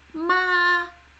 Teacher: look at the first tone which is the flat flat High tone